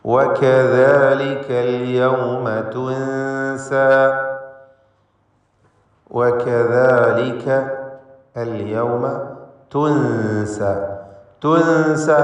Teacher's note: സാക്കിനത്തായ നൂൻ ഇഖ്ഫ ഹഖീഖി നൽകി മറച്ച് മണിച്ചുച്ചരിക്കുക. മറച്ച് മണിച്ച് അവ്യക്തമാക്കി മണിച്ചുകൊണ്ട് ഉച്ചരിക്കണം.